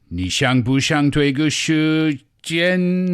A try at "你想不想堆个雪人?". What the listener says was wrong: Yes, it works.